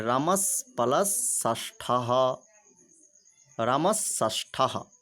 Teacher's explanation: सकार का सकार के साथ मूर्धन्य सकार के साथ योग होने के कारण दंत सकार को मूर्धन्य सकार हो गया